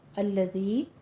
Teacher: ذی کو تھوڑا سا آپ نے لمبا کر کے پڑھنا ہے، ٹھیک ہے. زی نہیں کہنا ہے، سیٹی کی آواز نہ آئے، نرمی کے ساتھ پڑھنا ہے.